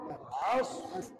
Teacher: হলক তথা কণ্ঠনালীর মধ্যাংশ থেকে উচ্চারণ করতে হয়। এটা আরো সহজ ভাষায় যদি আমি বলি, তাহলে গলাটাকে অর্থাৎ কণ্ঠনালীকে চাপ দিয়ে আইন সহিশুদ্ধভাবে উচ্চারণ করতে হয়।